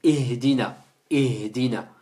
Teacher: on a la hamza qui sort du fond de la gorge, et on a le ha juste après qui sort également du fond de la gorge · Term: Le ha du fond